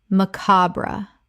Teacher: Three syllables with the stress on the second. The final e is sometimes silent.